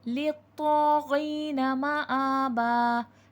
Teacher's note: لام کو تو کے ساتھ ملائیں گے، تو حرف مستعلیہ ہے، موٹا کر کے پڑھا جائے گا